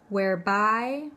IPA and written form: werˈbaɪ (whereby)